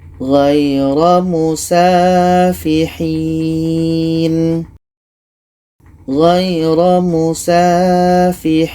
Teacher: Ada mad ya atau panjang ya mati, setelahnya ada huruf yang dimatikan, letaknya pada akhir bacaan. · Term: mad arid li sukun